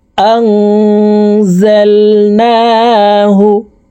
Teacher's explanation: তারপরে দেখুন আং, এখানে ইকফা গুন্না, নুন সাকিনের পরে ইকফার হরফ যা আসছে, এই কারণে এই নুন সাকিনকে নাকের ভিতরে লুকাইয়া গুন্নার সহিত পড়তে হবে।